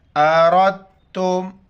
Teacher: را پر زبر ہے تو را کو موٹا کر کے پڑھیں گے